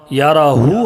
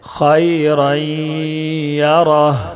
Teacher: आयत होने की वजह से, वक्फ करने की वजह से उल्टा पेश को जज्म बनाकर पढ़ेंगे। यराहू है, याराह पढ़ेंगे।